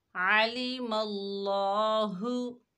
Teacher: اللہ کے لام سے پہلے زبر ہے، اللہ کا لام موٹا پڑھا جائے گا